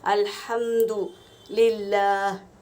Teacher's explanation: کیسے ہم آیتوں کے ذریعے پڑھیں گے۔ الحمد، یہ جو ہا نکل رہا ہے یہ ہا کا مخرج ہے، درمیانی حلق سے نکلتا ہے